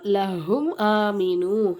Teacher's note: ரெண்டு எழுத்துக்களை தவிர வேற எந்த எழுத்துக்கள் வந்தாலும் நம்ம என்ன செய்யணும் அங்க மீமை சக்கினை வெளிப்படுத்தி உச்சரிக்கணும் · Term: இல்ஹாரே சபவி